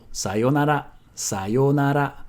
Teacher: sometimes you also hear it with a short yo